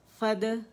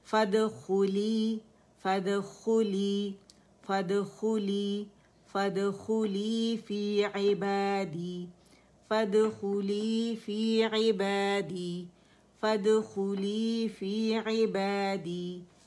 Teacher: Next آیت پہ آ جاتے ہیں. فد فا بھی باریک ہے, دال باریک ہے, اور قلقلہ ہوگا اس کے اوپر